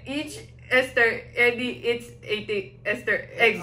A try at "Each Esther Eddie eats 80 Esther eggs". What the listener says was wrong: Okay. Pwede na.